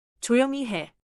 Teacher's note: The fall is on 해.